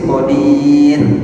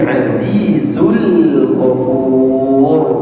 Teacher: Ro sukun sebelumnya sukun sebelumnya dhammah. Dia dibaca tebal.